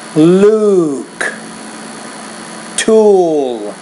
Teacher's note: that ooh sound make that a little bit longer